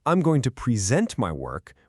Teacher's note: But if I say, I'm going to present my work with the stress on the second syllable, now it's a verb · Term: word stress